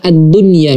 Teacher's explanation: Maka kita tidak mengidghamkan nun sukun ini ke huruf ya-nya.